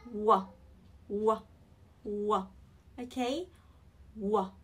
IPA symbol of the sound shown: w